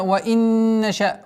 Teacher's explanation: Удержание назализации, полноценной ассимиляции в размере двух огласовок и четкое произношение кесры.